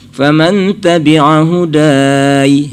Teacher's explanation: Faman tabi'a huda. Kalau berhenti huda ujungnya diberi ya-nya itu mati kan.